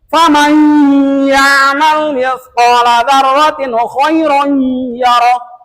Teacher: Ini idgham. Idgham itu tadi dimasukkan suara nun kepada iyanya tambah dengan gunah.